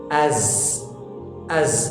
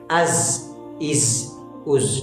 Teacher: زبان کی نوک ثنیہ سفلی کے اندرونی کناروں سے لگ رہی ہے